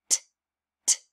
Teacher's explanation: What's our tongue doing in here? Tapping the top of our mouth.